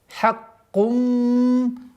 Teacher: У нас полная назализация в размере двух огласовок.